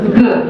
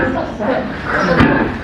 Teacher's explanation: So g is voiced and k is unvoiced.